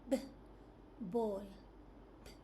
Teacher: Lips come together and close completely for a brief moment, then open to release the sound.